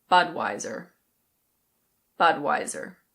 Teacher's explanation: In American English you pronounce the R